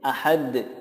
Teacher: Ahadun jika diwakaf menjadi ahad. Ada tambahan qalqalahnya karena dal disukunkan menjadi qalqalah